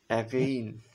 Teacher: এগেইন শব্দের উচ্চারণ করার সময় আমাদের জিহ্বাটা তখন সামনের দিকেও অগ্রসর হয় না পিছনের দিকে অগ্রসর হয় না মাঝামাঝি অবস্থানে থাকে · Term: সেন্ট্রাল ভাউস, সেন্ট্রাল ভাওয়েলস